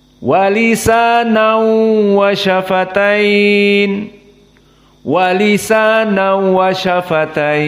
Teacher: baca Wisana wayafatain wa lisan wayafatain maka hanya idgham pada wau tanwin masuk kepada wau tanpa kepada gunah maka makhrajnya tidak kepada khaisu f maka ini idgham bila gunah